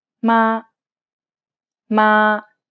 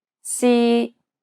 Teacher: it's pronounced high and steady and the pitch should be kept at the highest range that's comfortable for you Ma Ma the key Point here is to keep it even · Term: high tone